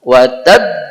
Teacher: watab ditekan lebih karena ada tasdid di bagian akhir